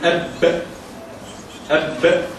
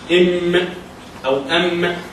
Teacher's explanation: الأخ طبعا أنت عايز تجيب فيها همس، فبدل ما بيجيب الهمس من المخرج بتاعها، هي طبعا لما بتبقى ساكنة المخرج بتاعها بيضيق شوية، بس عندك جميع الحروف لما بتكون ساكنة بيحصل فيه تصادم في المخرج. يعني أب حصل فيه تصادم في الشفتين عشان تطلع الباء